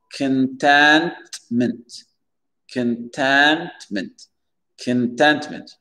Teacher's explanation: L'accent tonique, il va être sur le T-E-N, contentment, pour dire la satisfaction, contentment.